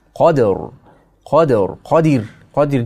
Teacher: Demak, qodir qo harfda bildiramiz aniq, dal harfni qalqalasini bildiramiz, ro inshaalloh chiqadi.